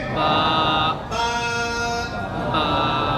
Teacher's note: दोनों होठों की अंदरूनी तली के मिलने से